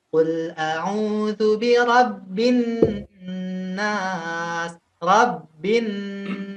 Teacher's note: Nun itu ada gunah gunah ini masuk ke hidung ya · Antum ketika mau melafalkan birabbinnas ya kita tekan nasnya itu tiga · Jadi untuk nun itu ada gunnah ya. Nun itu ada gunnah. Gunnah ini masuk ke hidung ya. Karena dia masuk ke hidung ya, maka dari itu kita tekannya itu tidak seperti tasydid di huruf pada umumnya ya.